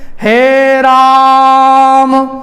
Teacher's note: जो आ की मात्रा है वह तीन मात्रा की हो जाएगी